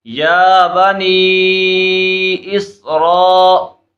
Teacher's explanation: حمزہ سین زیر اس، اب اس کو ملائیں گے اور یہاں پر آپ دیکھیں حروف مدہ کے بعد حمزہ دوسرے کلمے میں ہے تو مد منفصل ہو رہا ہے، تو اس وجہ سے ہم اس کو 2 2.5 الف یعنی 4 5 حرکات تک کھینچ کر پڑھیں گے